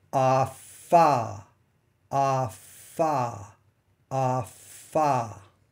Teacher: during the F part of a Fah you should still feel air escaping from your mouth flowing out of your mouth and hitting the hand that's in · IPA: /f/